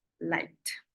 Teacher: When I have like, that ends in K, it's gonna sound like T